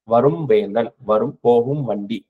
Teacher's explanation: மகர மெய் ம் அப்படின்ற எழுத்து வந்து அதுக்கு அடுத்தது ப வந்துச்சுன்னா இந்த ம் வந்து முழுசா தனக்குரிய அரை மாத்திரை அளவு ஒலிக்காது அதிலிருந்து குறைந்து ஒலிக்கும் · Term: மகர குறுக்கம்